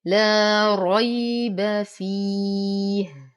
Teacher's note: لا ري وفخم الراء بعده ياء ساكنة فهو حرف لين يمد أقل من الطبيعي